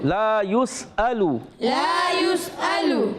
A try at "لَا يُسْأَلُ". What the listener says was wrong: حمزہ کی ادائی کریں گے, عین کی آواز نہیں آنی چاہیے.